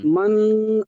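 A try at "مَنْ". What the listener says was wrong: মানটাকে তাহলে গুণনা করে ফেলছেন। মান আ পড়ছেন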